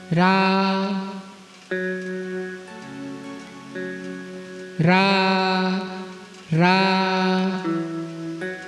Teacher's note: कंठ और तालू से निकल रहा है रा रा।